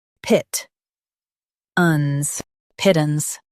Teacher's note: Stress pit and keep tance light.